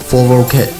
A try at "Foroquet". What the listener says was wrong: Ket. Not quet. I realized there's a Q.